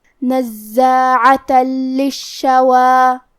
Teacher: لام حروف الادغام بغیر غنہ میں سے ہے اور ادغام کا معنی ہے حرف کو حرف میں داخل کرنا. تو ہم یہ تنوین کو لام میں ملا کے بغیر غنہ سے لیکن تشدید کے ساتھ یہ حکم کو ادا کریں گے